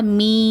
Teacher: சுக்குன் பெற்ற யாக்கு முன்னாடி கெஸ்ரா இருக்குது. இது என்னதுன்னா யாமத்தா. அதனால் 2 ஹரக்கத்து நீட்டி ஓதுங்க யாவை, மீ இந்த மாதிரி நீட்டி ஓதுங்க.